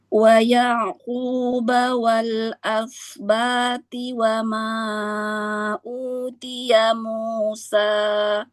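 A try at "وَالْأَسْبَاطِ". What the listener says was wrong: Toknya tebalkan lagi kayak tak itu. Wal asbati. Kurang jahar, masih ada hamas. Wal asbati. Jangan ada hamas. Nafasnya benar-benar ditahan.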